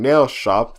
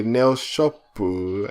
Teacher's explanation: native Japanese speakers will add like a U sound to the end of certain words. Like instead of saying nail shop, they'll say nail shopu, and I'm like, oh.